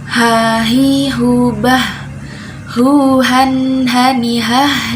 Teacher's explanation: terus sifatnya itu hamesh atau mengalir nafasnya · Huruf H itu makrojnya dari tenggorokan paling pangkal.